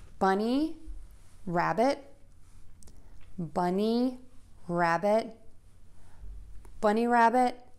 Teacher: And rabbit is going to be shorter, softer, and lower in pitch. We're also going to link those two words together so there's no pause between them. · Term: compound noun